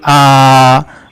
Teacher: जिन स्वरों के उच्चारण में मुख अधिक खुलता है उन्हें विवृत स्वर कहते हैं।